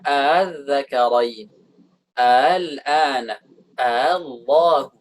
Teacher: hamzah yang keduanya itu ditashil, dikurangi hamzah, kekerasan hamzahnya itu, kekuatan hamzah itu dikurangi